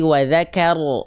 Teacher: kenapa ketika fathah dia enggak dibaca dengan vokal A tapi dia dibaca dengan vokal O